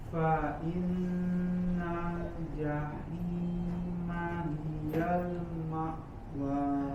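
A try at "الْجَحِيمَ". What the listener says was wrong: Baik ya, kemudian jaga suaranya keluar dari mulut, jangan jahi ya, tidak masuk ke hidung, jahima.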